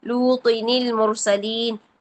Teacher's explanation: زیر تنوین والا نون تھا اس کو کسرہ دے کر آگے والے حرف کے ساتھ ملا دیا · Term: نون قطنی